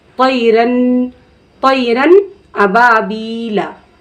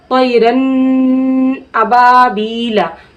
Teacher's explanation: ठीक है, जैसे अगर हम पढ़ दिए कोई रन तो इसमें हम क्या किए, नाक में आवाज़ को रोक लिए, तो ये क्या हो गया, गुन्ना हो गया। ठीक है, तो हमें नून की आवाज़ को ज़ाहिर करके पढ़ना है, नाक में बग़ैर आवाज़ को रोके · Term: इजहार